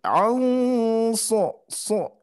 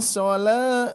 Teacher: Nah, ini catatan di ayat kelima, di sini nun mati bertemu sod, berarti sodnya huruf ihfa yang dia sifatnya isti'la, tebal ya. Jadi so ya, tidak sola, tidak tipis tapi so ya, ditebalkan.